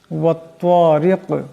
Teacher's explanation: তোয়ার আওয়াজটাকে মোটা করিয়া পড়তে হবে। এখানে দম সারলে কাফ সাকিন হয়ে যাবে।